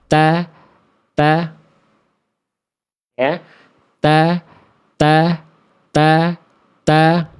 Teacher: Ini adalah titik persentuhan antara yang dimaksud dengan ujung lidah dengan pangkal gigi seri atas kita. Ya, ujung lidah berjumpa dengan pangkal gigi seri atas kita. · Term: makhraj huruf ta